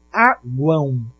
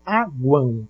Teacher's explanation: Você está falando aguão e não aguam. Você está falando um Uzinho no final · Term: tritongo